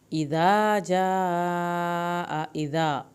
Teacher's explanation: ذال کو نرمی سے پڑھنا ہے، الف پورا ادا ہوگا۔ اذا جاء، یہاں پہ مد واجب ہے، اس کو 3 الف کے برابر لمبا کریں، حمزہ کی زبر کو لمبا نہیں کرنا۔